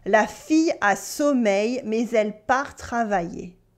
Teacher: Here we have a y sound at the end of sommeil for sleep and in the middle of travailler to work.